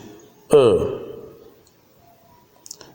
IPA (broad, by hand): ɜː